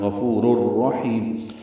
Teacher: یہ ادغام کامل ہے، را سے مل جائے گی، نون کی آواز ختم ہو جائے گی